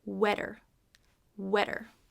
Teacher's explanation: instead of the short oh we have a short e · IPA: /ɛ/